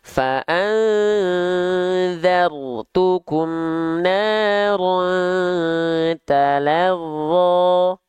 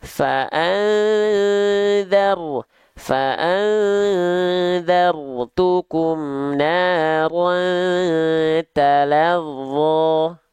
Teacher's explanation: Ro sukun jangan getarannya fa'anzartukum. Baik ro sukun, baik ro berharokat dilafalkan dengan getaran yang tak berlebihan.